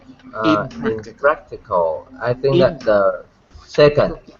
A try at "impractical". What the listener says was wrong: On the first. On the first, I think. Practical, impractical. I would put it on the first. It sounds much more natural to me on the first. Impractical.